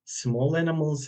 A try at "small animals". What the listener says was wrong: He says small animals, putting the stress on small, as if he had said big. So people like taking photos of like these big wild animals like gorillas and lions, but they like small animals as well.